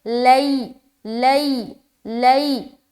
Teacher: یا ساکن ہے، یا ساکن سے پہلے زبر ہے، تو یا لین یعنی کہ نرمی کے ساتھ جلد ادا کریں گے۔